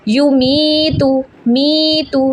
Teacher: یا ساکن سے پہلے زیر ہے، اس کو 3 سیکنڈ کے لیے لمبا کریں گے